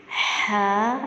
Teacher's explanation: اس میں ٹھنڈی سانس کی آواز آئے گی